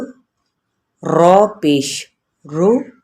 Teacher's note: را جب پر پڑی جائے گی نا تو اس کو اتنا زیادہ پر نہیں کرنا کہ ہونٹ آپ کے کیا ہو جائیں، گول، ضرورت سے زائد ہی۔